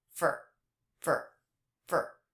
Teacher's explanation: in the word for that was pronounced with the schwa